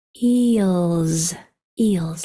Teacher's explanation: and S has a voiceless sound which is just air or that vibrating sound where your vocal cords are used sounds like a z and that will happen if the letter before it is also